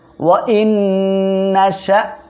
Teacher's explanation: ওয়াও জবর ওয়া, হামজা নুন জের ইন, নুন সাকিনের পরে ইদগামে বা গুন্নার অক্ষর নুন আসছে, গুন্নার সাথে মিলিয়ে পড়বেন।